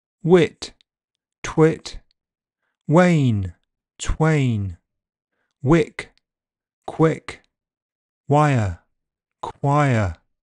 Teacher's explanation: W is voiceless when it appears directly after T or K in stressed syllables. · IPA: [ʍ]